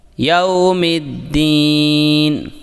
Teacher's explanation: یوم میں واو لین ہے، اسے بغیر کھینچے نرمی سے ادا کریں۔